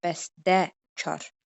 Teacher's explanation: Bəstəkar 2 kar samit yanaşı gəldiyinə görə olacaq bəstəkar. Gördüyümüz kimi T səsi D-yə keçəcək